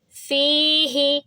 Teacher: لا روئی با فی، یا سے پہلے زیر، یہ بھی مد ہے، جیسے یہ مد ہے، کھڑی زبر کی وجہ سے اس کی آواز لمبی ہوگی، تا کی آواز لمبی ہوگی کیونکہ کھڑی زبر ہے، اسی طرح اس فا کی آواز لمبی ہوگی کیونکہ یا سے پہلے زیر ہے، یا ساکن سے پہلے زیر آ جاتا ہے تو پھر وہ بھی مد بن جاتا ہے، اور اس کی آواز کو بھی 2 سیکنڈ لمبا کریں گے، لیکن ہا کی آواز کو 1 حرکہ رکھیں گے۔